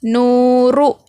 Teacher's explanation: نون واو پیش نو، رو پیش رو، نورو، یہاں پر واو مدہ ہے اور یہ ہے حرکت، رو پر صرف حرکت ہے، اس کو جلدی پڑھیں گے، نو کو کھینچیں گے۔